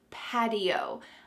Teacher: When there is a T surrounded by vowels, that T changes to a D.